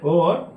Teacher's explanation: कंठ और ओष्ठ की सहायता से ओ और औ बोले जाते हैं।